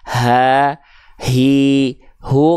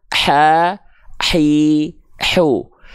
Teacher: Jadi hak besar itu dilafalkan dari pangkal tenggorokan, bukan dari dada, tapi dari pangkal tenggorokan, bukan terlalu ke atas juga biar nggak jadi hak kecil.